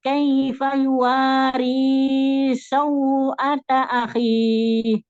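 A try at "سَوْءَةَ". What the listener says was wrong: Sau, bukan su. Sau. Sin fathah dulu. Harfulin ya.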